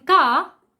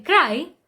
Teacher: In car, R is silent, but in cry, R is not silent.